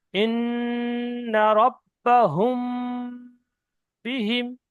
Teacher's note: মিম সাকিনের পরে বা এসছে, তাই মিম সাকিনকে একালি পরিমাণ গুণনা করে পড়তে হবে। তাহলে হা মিম পেশ হুম বলে আওয়াজটা নাকের মধ্যে ধরে রাখতে হবে